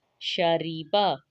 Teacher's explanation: یہاں پہ شین باریک حروف میں سے ہے، را کو بھی موٹا نہیں پڑھیں گے کیونکہ اس کے نیچے کسرہ ہے،